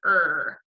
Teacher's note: and I are all of them just make this sound her you don't even really hear the vowel